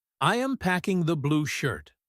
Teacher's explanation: If his voice drops at the end, he is just stating a fact.